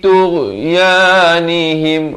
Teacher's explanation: Fi tughyanihim, ghain di hujung kerongkong